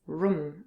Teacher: the word room is sometimes pronounced as room with a short uh sound depending on the accent of the english speaker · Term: short U sound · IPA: ʊ